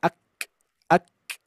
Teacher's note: Nah ini yang memang huruf kaf itu yang paling unik ini nih Pak Bu ya. Ada syiddah dan hams ketika disukunkan ya. Cuman yang didahulukan adalah syiddah, baru hamsnya percikannya saja.